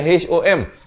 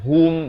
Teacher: Ha berbaris dhammah bunyi hu, bukan bunyi ho. Jadi bila bertemu mim jadi hum.